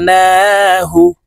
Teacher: আন জাল লাম জবর জাল আন জাল নুন খারা জবর না নুনের উপরে খারা জবর আছে তাই এই নুনকে এক আলিফ টেনে পড়বো